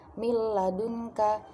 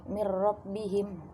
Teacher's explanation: cara pembacaannya dengan membaca dua huruf jadi satu, yang kedua dengan tasdid dan tidak berdengung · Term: idgham bila gunnah